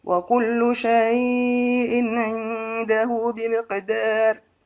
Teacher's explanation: ورش شيء بالتوسط والتقليل في بمقدار